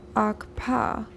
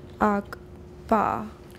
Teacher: In these words, the two closures occur almost simultaneously. One of the best ways to learning to say these words is to start by making a labial click. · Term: labial velar stop